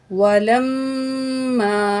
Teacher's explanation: लाम ज़बर मिम लम, मीम अलिफ ज़बर मा, वलम मा, अलिफ से पहले ज़बर है, 2 अलिफ के बराबर खींच के पढ़ेंगे।